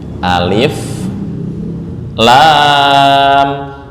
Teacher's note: Lam ini panjangnya 6 harokat. 6 harokat ya.